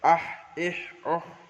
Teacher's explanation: হায়ের মাখরাজ কণ্ঠনালীর মাঝখান হতে উচ্চারিত হয় হা